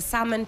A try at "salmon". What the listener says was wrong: The British will say salmon. You don't pronounce the L. Yes, but the British would say salmon.